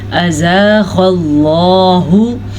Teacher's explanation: میں نے غین کو بھی پر پڑھا کیونکہ غین حروف مستعلیہ میں سے ہے